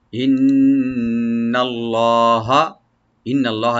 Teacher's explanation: এখানে লফজ জালাল একটু মোটা করে পড়বেন, ডিপ করে পড়বেন, রাইট দিবেন।